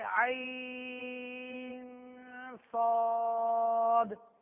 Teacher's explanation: غنہ کرتے نہیں کرے اس میں, آپ بھول تو نہیں گئے کہ نون ساکن یا تنوین کے بعد اگر حروف ہلکی کے علاوہ, حروف یرملون کے علاوہ, حروف اور حرف با کے علاوہ اور حرف آئے تو وہاں پر کون سا قاعدہ ہوگا؟ اخفا کا قاعدہ ہوگا, اور اخفا میں غنہ کریں گے. لہٰذا یہاں صاد ہے تو یہاں غنہ ہوگا, تو اس طرح پڑھیں گے عین صاد.